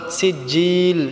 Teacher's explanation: মিং, এটাও আমরা গুন্না করব। সিজিল, জিলটা আমরা 3 আলিফ টেনে পড়ব।